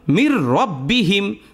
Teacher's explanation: যেমন রব্বিহিম এখানে নুন সাকিনের পরে র এসেছে র হলো ঈদগামে বেলাগুন্নার হরফ মানে গুন্না ছাড়া স্পষ্ট করে পড়তে হবে